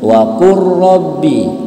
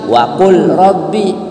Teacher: Jadi kalau lam ketemu ro, hilang lamnya, ro-nya yang berbunyi.